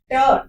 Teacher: ट का उच्चारण स्थान होता है मूर्धा। तालु के आगे वाला पार्ट उसको मूर्धा बोला जाता है।